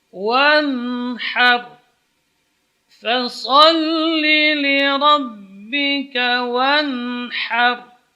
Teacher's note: Ha tipis, kemudian ra-nya tebal karena sebelum ra itu berharakat fathah.